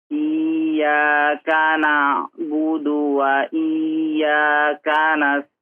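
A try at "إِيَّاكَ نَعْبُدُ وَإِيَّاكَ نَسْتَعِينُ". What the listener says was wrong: di huruf ainnya coba diperhalus lagi ya. Dicoba baca sekali lagi.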